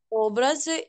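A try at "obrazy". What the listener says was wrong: Було правильно перший раз. Образи на передостатній слог. В слові образи три слова, так? Наголос на передостатній. Образи. Щоб не було у нас образи або образи. Образи.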